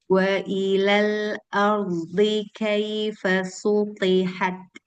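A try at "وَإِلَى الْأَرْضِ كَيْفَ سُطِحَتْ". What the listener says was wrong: Ya, sunya masih tebel.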